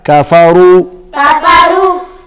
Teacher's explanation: را موٹا پڑھا جائے گا